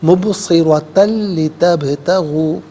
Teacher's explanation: تا پر دو زبر کی تنوین ہے، اسے لتبتغوا کی لام کے ساتھ ملائیں گے، لام کی آواز کو ادا کیا جائے گا، یرملون کا قاعدہ یہاں اپلائی ہوگا، مبصرتن لتبتغوا اس طریقے سے پڑھیں گے۔